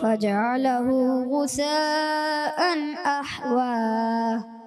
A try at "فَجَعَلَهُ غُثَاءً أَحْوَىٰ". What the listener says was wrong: تھوڑی سی مد کو کھینچنا ہے، زیادہ کھینچنا ہے، ٹھیک ہے نا. فجعله غثاء أحوى.